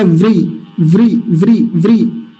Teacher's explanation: व का हल्का सा उच्चारण आएगा, री का भरपूर उच्चारण आएगा